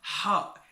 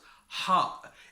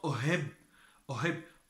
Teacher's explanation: It comes deep from inside, and it comes from down the throat.